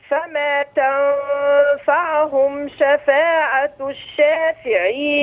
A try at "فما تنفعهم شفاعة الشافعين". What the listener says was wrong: جميل كده ظبطنا الميم، عايزين بقى العين نظبط التشكيل بتاعها. فما تنفعهم لا شفاعة عو مش تنفع تنفعوا جميل بس ابدأ فما.